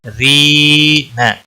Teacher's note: کا کے اوپر مد اصلی ایک الف کے برابر اس کو کھینچنا ہوگا. یہاں پر جو را ہے باریک پڑی جائے گی کیونکہ اس کے نیچے زیر ہے اور آگے یا مدہ ہے رینا.